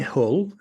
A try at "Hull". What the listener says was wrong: A proper Yorkshireman doesn't pronounce the H. It's just Hull. It's Hull.